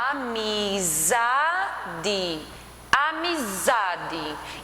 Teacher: percebe que o za, ele tem uma tonicidade maior. Então, ele é a sílaba tônica. E as demais são as átonas.